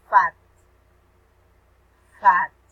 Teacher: The mouth is open, but it's not tense. It's lax.